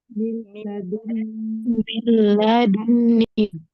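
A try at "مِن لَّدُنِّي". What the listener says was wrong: Ingat ya, saya nggak suka kalau bacaan idgham bila gunnah tuh di ayun gitu loh. Min ladu. Jadi ketemu lam itu sama aja huruf lam tasydid. Nunnya nggak ada. Itu kayak kita baca illa. Bacaan illa aja. Illa.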